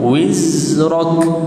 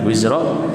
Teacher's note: Huruf zai mempunyai getaran yang banyak, macam lebah kan, lebah, lalat kan.